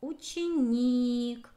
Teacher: Ударение падает на букву И.